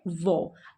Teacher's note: जिन वर्णों के उच्चारण में हमारे दांत और हमारे होंठ आपस में एक दूसरे को छू रहे हैं जैसे कि उसमें कौन आता है, वो। आप वो का उच्चारण करिए तो आप महसूस करेंगे कि आपके दांत आपके होठों को छू रही हैं। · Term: दंत ओष्ठ